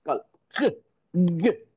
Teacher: k k அப்படிங்கும்போது இந்த இடத்துல கொஞ்சம் இருக்கும், அந்த வீலம் அப்படிங்கிற இடம் வந்து கொஞ்சம் ஆக்டிவா இருக்கும். ஸோ வீலர் ப்ளோசிவ், அந்த ஸ்டாப், ஏர் ஸ்டாப் ஆகி வெளியில வரும்.